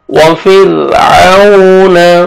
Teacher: را ساکن سے پہلے کسرہ، را کو باریک کریں گے